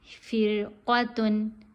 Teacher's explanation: را باریک پڑھی جائے گی, قوف موٹی پڑھی جائے گی